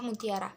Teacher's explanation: U bunyi belakang tinggi bulat